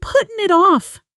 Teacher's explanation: Now at natural speed have almost disappears into a contraction and it blends directly into putting.